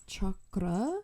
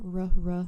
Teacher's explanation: it is supposed to be a flipped R like chakra um but obviously in America we use a retroflex r which is the r r you know so we say chakra